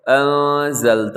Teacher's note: یہاں پہ اخفا ہو رہا ہے، نون ساکن کے بعد زا ہے